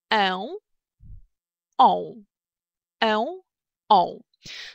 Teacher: произношение начинается с гласных э, да, и о, соответственно, и чуть позже у нас появляется носовой призвук н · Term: звуки носовые